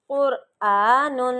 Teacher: قر میں را موٹا ہو رہا ہے کیونکہ را کے پچھلے حرف پہ پیش ہے، را پہ جزم ہے